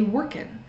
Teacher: in some areas we don't pronounce the G on the end of ing words. Instead of working, we might just say workin'.